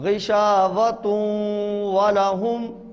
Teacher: تا کو واو سے ملانا ہے اور ناک میں آواز لے جانی ہے